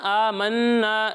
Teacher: قل هو الرحمن آمنا به وعليه توكلنا یہاں نون مشدد ہے نا، آمنا، یہاں غنہ کرنا ہے، غنہ کی مقدار پہلے بھی بتایا، ایک الف کے برابر ہے